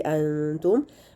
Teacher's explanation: बा और मीम को हम निकाल दें तो बाकी जितने भी तमाम हरूफ हैं उनमें से कोई भी मीम साकिन के बाद आए तो वहाँ पर हमने इजहार शफ़ी करना है, यानी हम मीम को क्लियरली उसके मखरज से अदा कर देंगे और उसमें एक्स्ट्रा गुन्ना नहीं करेंगे, यानी लंबा नहीं करेंगे गुन्ना को, सिर्फ उसको अपने मखरज से उसकी सिफ़ात के साथ अदा करेंगे।